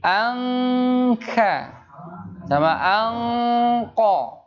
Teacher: nun sukun ketemu dengan kaf, nun sukun ketemu dengan qaf dibacanya ang.